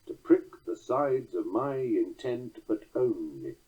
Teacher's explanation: this orphan or rogue unaccented syllable at the end of the line. It makes the line 11 syllables long, or hendecasyllabic. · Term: feminine ending